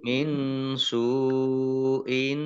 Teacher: nun sukun bertemu dengan huruf sin, bacaan ikhfa dibaca samar-samar · sin dhamma wawu sukun matobi'i, tetapi karena bertemu dengan huruf hamzah dalam satu kata, maka menjadi mat wajib mutasil. Mat wajib mutasil dibaca panjang harus 5 harokat.